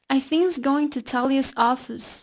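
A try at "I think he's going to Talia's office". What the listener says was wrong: so here you didn't pronounce the he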